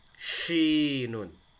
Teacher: Ada tafashi, ya. Menyebar suaranya di rongga mulut.